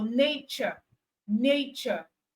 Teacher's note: then T in nature is giving us the CH sound